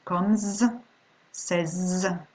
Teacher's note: the S will be pronounced Z after all the other ones, okay, all the other sounds.